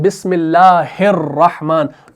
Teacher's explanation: तो हा को हम रा से मिलाते हैं, अलिफ लाम को नहीं पढ़ा जाता। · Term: हमज़तुल वस्ल